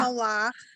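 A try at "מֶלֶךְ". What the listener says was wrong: Melech. Melech. You got to get, I mean, you have to say Melech because you say Malach, you're saying a different word. Melech is ruler.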